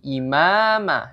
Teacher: huruf mim dengan mad thii imama dibaca Dua harakat